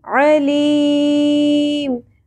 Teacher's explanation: عین کے مخرج پہ آپ نے فوکس کرنا ہے، بہت اچھے سے وسط حلق سے ادا کرنا ہے